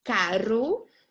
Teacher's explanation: and the R has a rolled sound